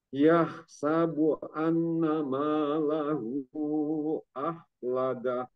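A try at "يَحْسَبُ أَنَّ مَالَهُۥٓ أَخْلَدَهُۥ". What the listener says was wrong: Punya itu mad sila tawilah. Malahu punya itu dibaca lima harokat ya. Lima harokat. Yahsabu anna malahu akhlada.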